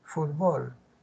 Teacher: la sílaba tónica está la penúltima sílaba palabra grave